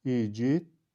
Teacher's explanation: Bu sözün düzgün tələffüzü igidlər formasındadır. Burada l samiti d samiti ilə əvəz edildi. Yəni, sözün düzgün tələffüzündə l səsi yoxdur.